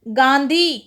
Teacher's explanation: अनुनासिक है और इसमें चंद्रबिंदु लगा हुआ है क्यों है कि नाक और मुंह दोनों से आवाज आई है